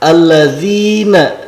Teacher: zina itu mad tabi'i karena harkat kasroh diikuti ya sukun